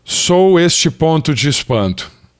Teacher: Aqui, como o sou tem esse ditongo decrescente, o O é vogal e o U funciona como semivogal, sempre que está acompanhado de outra vogal